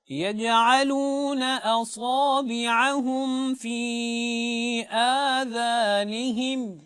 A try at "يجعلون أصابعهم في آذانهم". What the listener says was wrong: बेटा आपने सौद को मोटा नहीं पढ़ा, इसको कम मोटा पढ़ा है, जबकि इसको आप कामिल इसकी अदायगी ये है कि इसको तफ़ख़ीम के साथ मोटा करके पढ़ा जाता है।